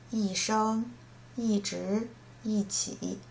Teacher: If E plus the first tone, then the second tone, and the third tone, E will change to the fourth tone